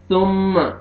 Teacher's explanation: سامنے والے جو دو دانت ہیں اس کے نیچے آپ نے زبان کو ٹچ کرنا ہے۔ ثم میم مشدد غنہ کریں گے، نوز میں ساؤنڈ لے کے جائیں گے۔ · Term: ثا